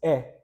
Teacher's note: e in isolation no nasalization